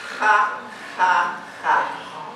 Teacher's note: your tongue is rapidly hitting the posterior pharyngeal wall. And one way you might think about it is when you're snoring. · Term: pharyngeal fricative